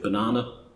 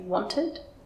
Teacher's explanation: the little ə, which only occurs in an unemphasised syllable in a word